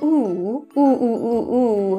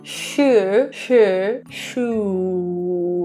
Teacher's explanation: in a North American position, ooh, you're going to see that really tight rounding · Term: rounded position